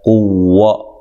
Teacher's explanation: اچھا جی، قاف کو موٹا ادا کرنا ہے، قوہ، واو کو ادا کرتے ہوئے ہونٹوں کو گول کرنا ہے